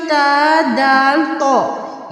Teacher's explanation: जुबान की नोक उपर के दांतों की जड़ से अदा होते हैं